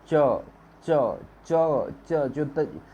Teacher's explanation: जो च बोलते समय जीभ तालू से सटती है